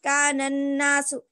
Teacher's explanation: نون کے بعد الف اور لام ہے, اس کو بھی ہم نہیں پڑھ رہے ہیں, بعد والے حرف سے ملا کر پڑھیں گے.